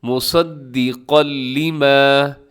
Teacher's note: تو یہاں پر آپ نے ادغام کرنا ہے اور ادغام تام یعنی مکمل ادغام. یہاں پہ بالکل آپ نے جو تنوین کا ساؤنڈ ہے، جو نون کا ساؤنڈ ہے، وہ یہاں پر نہیں دینا